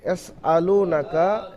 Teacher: পর্যন্ত হারাকাত তাড়াতাড়ি পড়বেন লামা পেশ লু ও সাকিন ডান দিকে লামের উপরে পেশ ও মাদ্দা এক আলিফ পরিমাণ টান দিয়ে পড়তে হবে নুনের উপর জাবার কাফের উপর জাবার হারাকাত তাড়াতাড়ি পড়বেন আলিফের ডান